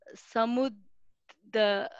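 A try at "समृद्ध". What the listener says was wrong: Not samu, it is Samruddha.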